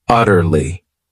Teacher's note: adverb utterly this word has three syllables and the stress is on that first syllable utterly it means completely totally absolutely those are all synonyms for